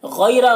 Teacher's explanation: غین کو پر پڑھیں گے، حروف مستعلیہ میں سے ہے، یا لین ہے، اس میں نرم آواز کے ساتھ جلد پڑھیں گے۔ را کو پر پڑھیں گے۔